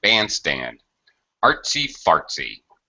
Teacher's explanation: Definitely higher on the stress syllable in the first word.